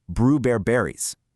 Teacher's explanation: It's just littered with L to R substitutions and inserted syllables, coming out as bruberries.